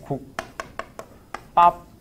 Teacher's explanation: 당연히 이 비읍을 이렇게 발음했으니까 뭐로? 된소리로 발음을 한 거야